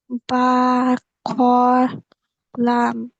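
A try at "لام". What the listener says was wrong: লাম একটু টেনে পড়তে হবে।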